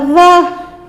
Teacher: نرمی سے ذال کو دونوں دانتوں کے درمیان میں زبان کو رکھتے ہوئے ادا کریں گے